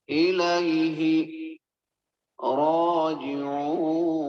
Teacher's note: یہ حروف واو مدہ بھی ہو رہی ہے تو ہم اس کو لمبا بھی کریں گے